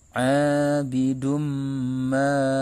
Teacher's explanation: Tanwin dhamma bertemu dengan mim adalah merupakan salah satu hukum bacaan idgham bigunna. Maka cara membacanya dibaca lebur disertai dengan dengung. Abidum ma. Ma ini dibaca panjang 2 harokat karena ini merupakan salah satu hukum bacaan mad tabi'i karena ada alif sebelumnya fathah, dibaca panjang 2 harokat.